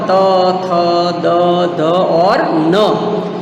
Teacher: त वर्ग, त थ द ध और न, जो दांत में से बोला जाता है, इसलिए उसको बोलते हैं दंत्य व्यंजन